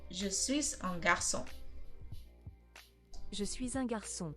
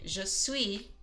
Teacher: Je suis un garçon. And I am running the S, even though you don't usually pronounce the final consonant on a few of these words. If I say je suis, you don't hear the S.